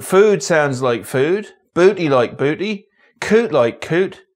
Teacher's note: yods are dropped after every consonant